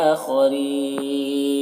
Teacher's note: آخرین حمزہ میں کھڑا زبانی سے ایک الف کے برابر کھینچیں گے. خا کو پر پڑھیں گے, ری میں را کو باریک پڑھیں گے اور یہاں پر وقف کریں گے تو مد عارض وقفی ہوگا.